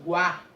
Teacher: Quando eu falo guá, ó, guá, o U, ele tem uma intensidade menor, semivogal. O A, guá, tem uma intensidade maior, vogal.